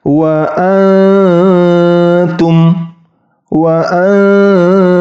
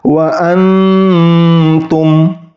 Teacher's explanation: bacaan yang salah ketika ta itu ujung lidahnya itu bertemu dengan Gigi · Tetapi huruf ta-nya ini ingat disamarkan. Nah, cara menyamarkannya yaitu ketika ujung lidah itu tidak bertemu dengan ujung gigi seri atas. Jadi digantung, tidak boleh bertemu.